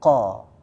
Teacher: Kalau jadi begini Bapak-bapak, kalau misalnya huruf, jadi kan nanti ada istilahnya huruf isti'la. Huruf-huruf yang tebal. Ya, seperti qaf salah satunya. Kalau dibaca fathah, ketebalannya itu masih stabil.